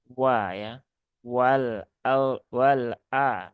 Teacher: Dia adalah huruf yang diucapkan dengan monyong terlebih dahulu, walaupun harokatnya fathah, karena dia letaknya kan tempat keluarnya dengan cara memonyongkan bibir terlebih dahulu.